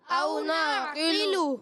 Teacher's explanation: نعقل میں قاف کو پر رکھیں گے، قاف کے نیچے زیر ہے، مگر زیر آنے کی وجہ سے بھی قاف پر ہی رہے گا